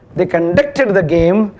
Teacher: the stress will fall on the second syllable